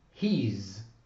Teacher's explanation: the vowel of the word is so reduced in duration as to be completely lost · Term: contracted pronunciation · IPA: [hiz]